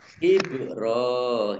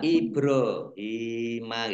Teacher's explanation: bak sukun bacaan kolkolah. Ya, dibaca memantul. Jangan dibaca ibro ya.